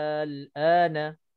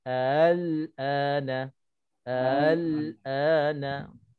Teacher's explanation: Kita boleh baca 6 harakat al-ana, dan kita boleh baca al-ana. Al-ana. Boleh baca 2 harakat berserta tashil.